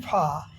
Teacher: आर silent है, फा केवल आ ध्वनि लंबी हो गई है